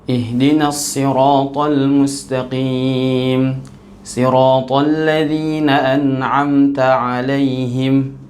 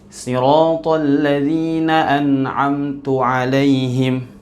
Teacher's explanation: an'amta yang semestinya dibaca dengan fathah. Kita baca dengan an'amtu dengan dommah